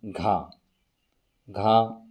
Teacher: घा में जो जिह्वा है वो तालु से नहीं टकराती है